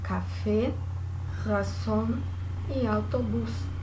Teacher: E aí, como exemplo, um grupo das agudas, que seriam as oxítonas em português, temos as palavras café, razón e autobús. Percebam aí que a sílaba tônica é a última sílaba.